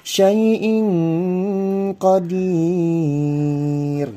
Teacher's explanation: Hampir seperti nggak kedengaran huruf nun matinya, lebih kedengaran suara kayak huruf ang. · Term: ikhfa ab'ad